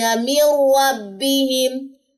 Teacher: نون ساکن کے بعد را، یہاں پہ میں نے غنہ نہیں کیا، جسٹ ادغام ہوا ہے